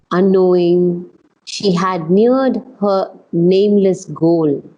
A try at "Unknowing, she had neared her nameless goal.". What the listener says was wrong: here, you want to be a little bit stronger on the word unknowing. Knowing she had neared her nameless goal. Because she's not aware yet.